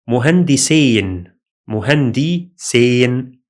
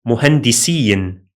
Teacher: Don't confuse this ending with the ending of the dual. The spoken ending of the dual, as we explained before, is in with fatha, in, while the ending of the masculine plural in speaking is in with kasra, in.